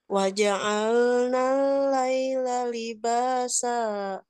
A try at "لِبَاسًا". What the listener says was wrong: Nah, kurang ini Bu. Libasa. Kurang atas sedikit. Waja'alna al-laila libasa.